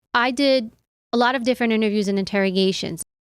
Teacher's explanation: The final d in the word did is held and not released. You can do this by only putting the tip of the tongue behind the upper teeth, but not releasing the air while pronouncing the sound. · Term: held T